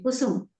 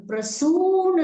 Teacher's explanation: કુસુમમાં બે ઉકાર જે છે એ હ્રસ્વ છે, પણ પ્રસૂન શબ્દ છે, પ્રસૂન ફૂલ શબ્દ છે, તો એમાં દીર્ઘ ઉકાર છે